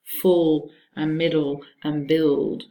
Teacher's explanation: Listen for words like full and middle and build. The sound is more rounded, more warm, and it's called oo resonance. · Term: dark l